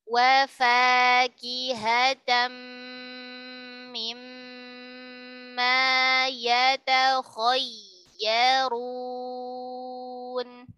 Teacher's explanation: Kha tebal, dia huruf isti'la.